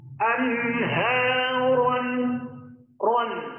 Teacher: Jadi ketika mengucapkan ro berharokat fathah tanwin tidak cukup ron, akan tetapi ron ditebalkan suaranya. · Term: ro yang dibaca tebal